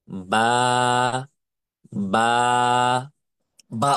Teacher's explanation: দুই ঠোঁটকে একসাথে করে দুই ঠোঁট থেকে বা অক্ষরটি উচ্চারণ করতে হয়